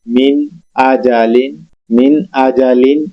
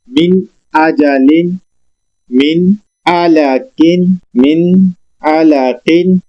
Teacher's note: नून अपनी असली हालत में पढ़ा जाता है। इसको इजहार करना कहते हैं।